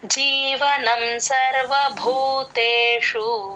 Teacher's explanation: సర్వభూ భూకి మహాప్రాణం ఉంది